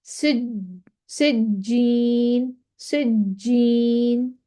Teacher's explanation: तीसरा नंबर आ गया ना। जीम कलकला हर्फ है, उसके ऊपर शद है, लेकिन वक्फ नहीं कर रहे, दरमियान में आ गया। अब आवाज में जुम्बश तो है।